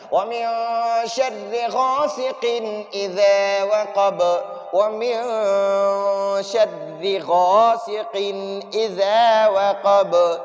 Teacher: گے، وَمِن شَرِّ غَاسِقٍ إِذَا وَقَبَ، وقب نہیں پڑھنا، وقب، ب وقب آخر میں یہ با کو جھٹکا دینا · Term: قلقلہ